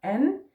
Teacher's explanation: So the first syllable is en with a flat A. En with a flat A, so we also have open A's in Danish, but this one is flat